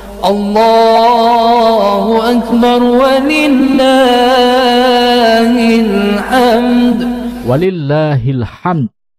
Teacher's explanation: Karena dibaca serangkai dengan lillahi, maka pengucapan alhamdu menyesuaikan. Al di depan alhamdu luluh dirangkai harokat hi sehingga menjadi hil hamd